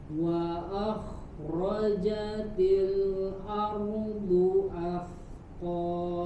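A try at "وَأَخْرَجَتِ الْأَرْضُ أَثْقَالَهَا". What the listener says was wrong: Wa akhra, sini mengalir tanpa ada jeda. Jadi jangan wa akhra, jangan berhenti dulu di situ. Jangan ada jedanya. Wa akhrajat, tapi sambung ya, karena roh khawas lagi dia harus keluar suaranya mengalir 100%, tidak ada jeda. Wa akhrajatil ardu athqalaha.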